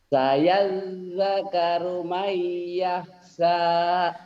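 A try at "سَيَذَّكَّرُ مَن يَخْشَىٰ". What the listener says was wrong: Shinnya gede ya, yahsha.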